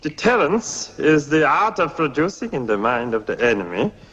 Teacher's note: Sellers speaks in a heavily sibilant German accent, his voice pitched high and sometimes rising to a happy shriek